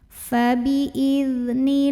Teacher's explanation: Lam pada lafaz Allah atau lam jalalah dibaca secara tarqiq karena huruf sebelumnya nun berbaris kasrah. Maka bacanya ini tipis, pangkal lidah datar, bunyinya lah bukan loh. · Alif lamnya namanya alif lam syamsiyah karena alif lam ketemu dengan huruf syamsiyah yaitu lam. Maka alif lam ini tidak perlu kita baca, lewatin aja ya. Diidghamkan langsung dari nun ke lam.